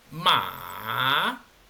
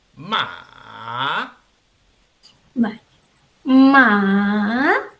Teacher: el tercer tono no es sostenido más bien Es un tono que desciende aquí está la clave no desciende y luego asciende formando una